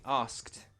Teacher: Again, we pronounce that ed like a t.